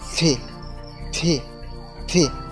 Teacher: দুইটা লেগে যাবে তারপর একটুখানি বাতাস বের হবে